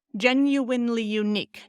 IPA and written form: ˈʤɛnˈjuˌwaɪnli juˈnik (Genuinely unique)